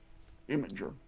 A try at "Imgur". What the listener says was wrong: Imgur. There's no I. There's no I. Imgur. There's no I. You're adding an I. It can be Imgur or Imgur. I don't care, but there's no Imgur.